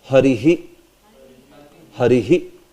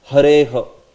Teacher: the visarga will take the sense of the last vowel which is being pronounced. Harehe.